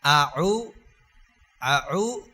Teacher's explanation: আইন এবং হা এই দুইটা একই জায়গা থেকে উচ্চারণ হয় হলকের মধ্যখান গলার মাঝখান থেকে উচ্চারণ হবে